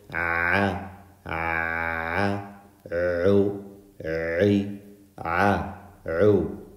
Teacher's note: your vocal cords are closed tight allowing a little bit of air to come out with vibration in the back of your throat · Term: ayn